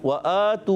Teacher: हाँ वफ़ कर दें तो यहाँ पर वाव मुद्दा बन जाएगा